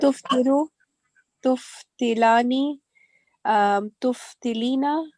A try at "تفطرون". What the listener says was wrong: No, تفطرون. Ra is a ra at the end.